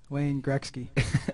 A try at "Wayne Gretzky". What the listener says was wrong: Okay, the K doesn't come before the T in Wayne Gretzky.